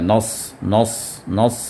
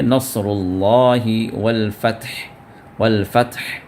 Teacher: سین ہی کو آپ تھوڑا سا پریشر دیں گے تو آواز موٹی ہوگی، جس میں صاد نکلے گا، صاد کا یہ ساؤنڈ آئے گا، نص۔